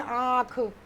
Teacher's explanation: चंद्र बिंदु को अनुनासिक। और अनुनासिक का उच्चारण क्या होता है? मुख और नाक, मुख और नाक दोनों से होता है।